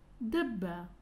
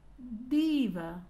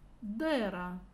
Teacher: Звук «д» переднеязычный, зубной, звонкий, согласный.